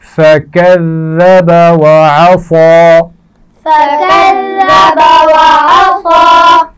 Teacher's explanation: ذال پر شد ہے تو اس کو ہم سختی تو کریں گے لیکن اس کی آواز میں سیٹی نہیں آنی چاہیے